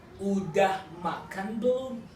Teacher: Usually, the intonation is rising intonation at the end